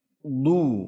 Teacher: huruf dad itu tebal, du itbaq sifatnya itbaq tebal